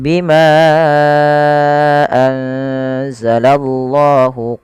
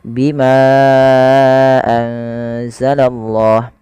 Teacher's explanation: kita wajib ya memanjangkan panjangnya sepanjang 4 harakat atau 5 harakat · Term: mad jaiz munfasil